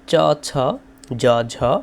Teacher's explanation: তারপরে হচ্ছে চ, ছ, জ, ঝ এবং স এটি হচ্ছে তালব্য।